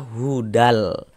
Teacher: Bunyi tanwinnya dimasukkan ke huruf lam, melebur ke huruf lam. Kita baca hudal. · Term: idgham bila gunnah